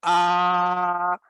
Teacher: اور اس کے بعد ہے منہ کا، میں نے بتایا تھا خالی حصہ، یہ ایسے دیکھیں، جب آپ منہ کھولتے ہیں آپ کہتے ہیں نا آ، یہ جو آواز بغیر کسی رکاوٹ کے کہیں بھی ٹکرائے سیدھی منہ سے باہر آ رہی ہے، یہ جوف دہن ہے